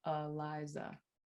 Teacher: when I pronounce my own name, I use a schwa in the first and last syllable. So I say Eliza.